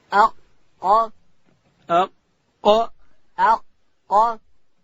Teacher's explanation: ادا کیږي د ژبې پای به لوړ تالو ته ورولو او حرف قاف له ډکو حروفو څخه دی. اق اواز په قاف کې شپره ډکوو، که ډک نسی د کوچني کاف سره مشابهت راځي.